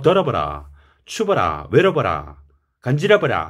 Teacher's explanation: 입술이 닿을 듯 말 듯 더버도 아니고 더워도 아니고 그 사이에 더버 정도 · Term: 순경음 비읍